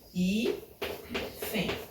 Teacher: o i é a penúltima sílaba e ela é a sílaba tônica, então hífen é uma palavra paroxítona